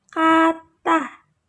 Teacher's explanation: Faktor yang paling mempengaruhi pembentukan alfon vokal adalah tekanan suku kata dan posisi vokal dalam kata. Contohnya vokal A menjadi e pada suku kata akhir yang tidak mendapat tekanan